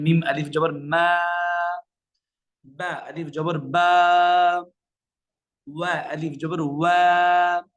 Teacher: জবরের পরে যদি খালি আলিফ হয় তাহলে সেখানে আমরা দ্বিগুণ টেনে পড়বো, অর্থাৎ এক আলিফ টেনে পড়বো।